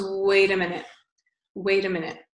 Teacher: So in his American accent, he makes the T sound on wait sound like a D. So it becomes wait a minute.